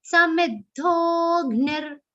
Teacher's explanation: And it's a short sound, so you have to cut it short there. And ra, the visarga is pronounced like half ra.